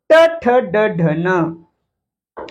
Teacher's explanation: मधल्या भागाला लागते म्हणून याला काय म्हणायचं? मूर्धन्य